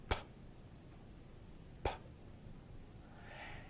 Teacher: What they realized was that if you go far enough back, say to Latin, you will find words that are voiceless stops. That is, they are produced by stopping the air and then releasing it